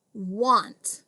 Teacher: it's a one syllable word and i hear an aw sound here